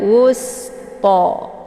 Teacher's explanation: Kemudian wus ini ada sin ya, dia sifatnya adalah sofir, jadi desis anginnya itu lebih jelas dan bacaannya ditipiskan wusto ya. Kemudian to ini dibaca panjang 2 harokat karena ada harokat tegak berdiri di atas huruf to, ini dinamakan dengan mad tabi'i muqaddar.